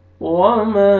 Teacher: اوپر مد جائز ہے، آپ نے 3 سے 4 الف کے برابر ایکسٹرا کھینچنا ہے